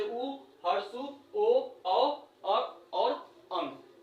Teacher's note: जिन स्वरों के उच्चारण में ओट्स वृत्तमुखी या गोलाकार होता है, उसे हम वृत्तमुखी कहते हैं।